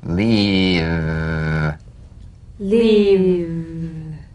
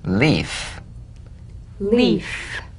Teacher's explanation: If you don't have enough vibration in your V's, they'll end up sounding like the F because they're exactly the same. One has vocal cord vibration, the other is unvoiced. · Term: cognates